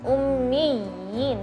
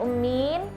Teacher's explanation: Juga yang perlu diperhatikan ketika membaca al-ummiyina, ya, ummiyina. Jadi dengungnya disempurnakan, ya bertasydid, setelahnya ada ya mad juga